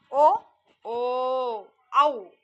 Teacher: ಇವು ಗಂಟಲು ಮತ್ತು ತುಟಿಯ ಸಹಾಯದಿಂದ ಇವುಗಳನ್ನ ಉತ್ಪತ್ತಿಯಾಗುತ್ತವೆ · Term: ಕಂಟೌೌಷ್ಟ್ಯ